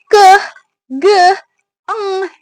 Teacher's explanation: dihasilkan dari alat artikulator lidah bagian belakang ya bertemu dengan titik artikulasi velar langit-langit lembut yang menghasilkan ke, ge, eng gitu. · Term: dorsovelar